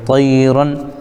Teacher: را پر دو زبر ہے تو دو زبر کی تنوین کے بعد حروف حلقی میں سے حمزہ آ رہا ہے، اس لیے یہاں پر اظہار ہوگا تو نون کو ظاہر کر کے پڑھیں گے